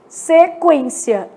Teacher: o U é lido, né? E ele é lido com som de trema. Então, nesse caso, ele tem um som de semivogal. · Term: U semivogal